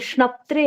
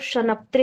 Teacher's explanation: जैसे श्नप्त्रे है वो शनप्त्रे कहेंगे तो गलत हो जाएगा। वो हलंत है, हलंत की तरह कहेंगे।